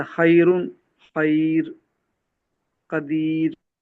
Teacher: را ساکن، ما قبل یا ساکن، جیسے خیرن، خیر، قدیر. یہاں پر را کو باریک پڑھا جائے گا.